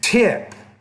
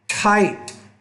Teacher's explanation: You got to make that T with more air.